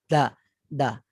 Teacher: hujung lidah itu diletakkan di antara gusi dengan permulaan gigi kacip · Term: dal